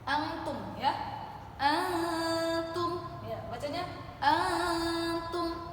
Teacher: nun itu dia berada di tengah-tengah antara ujung lidah kita, sedangkan ta itu berada di ujung lidah kita. Berarti dia dekat, nun dengan ta itu hurufnya dekat. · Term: aqrab